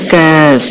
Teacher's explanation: قاف کی جگہ سے ذرا نیچے منہ کی جانب ہٹ کر اس سے کیف ادا ہوتا ہے